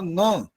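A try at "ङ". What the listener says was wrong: न्या गलत है, न्या नहीं होता, च छ ज झ न्या यहाँ होता है,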